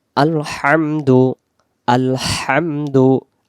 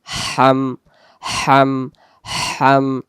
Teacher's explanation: যদি আমি বলি আলহামদু, এটা হা তখন হবে না, এই যে এই হা আছে তখন এই হা এই জায়গায় আমার মুখের আওয়াজ আসতেছে আলহামদু, কারণ এই হায়ের মাখরাজ গলার মাঝখান থেকে শো শো আওয়াজ দিয়ে বেরোবে